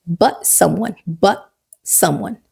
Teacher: it is a perfect place for a glottal stop